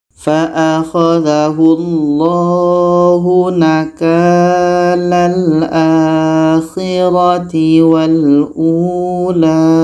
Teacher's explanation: ada hamzah bertemu waw mati, ini pun mat badal, panjang 2 harakat